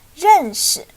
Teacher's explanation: Another tone change is this character. Here, the more natural way is to speak it in a neutral tone or a light tone.